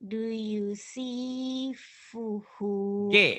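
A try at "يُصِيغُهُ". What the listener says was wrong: itu G ya bukan fa. Yusiguhu. G. Mirip ya kalau P itu bulat. agak segitiga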